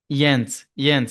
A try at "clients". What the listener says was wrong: Clients. No, clients. And it's NTS, client. One client, two or more clients.